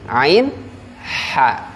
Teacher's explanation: yang tengah tenggorokan itu hurufnya ain dan ha